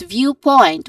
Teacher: viewpoint which has also two syllables starting with view the first syllable and the stressed syllable also